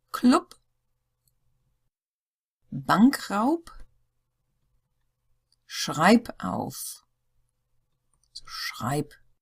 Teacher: nearly all of these had the P sound rather than the b